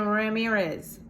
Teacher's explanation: that's how americans say it because we don't trill our r's you put a d in front of the r the makes